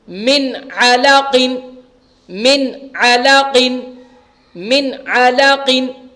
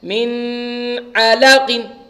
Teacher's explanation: کیونکہ نون ساکن کے بعد حروف حلقی کے 6 حروف میں سے عین آ رہا ہے, اس لیے ہم نون کی آواز کو ظاہر کر کے جلدی سے بغیر غنہ کے ادا کر رہے ہیں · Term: اظہار